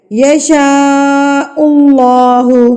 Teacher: اللہ سے پہلے پیش آ گئی ہے تو آپ نے اس اللہ کو پر کر کے پڑھ دینا ہے